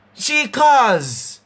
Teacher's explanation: it sounds like you're saying a Z instead of a S. So if I say she calls, you would have want to probably spell this and put on a little Z.